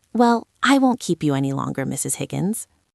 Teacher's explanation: you have to say it with a falling intonation, right? You cannot say it like a question. You cannot say, "I won't keep you." No, that sounds unsure.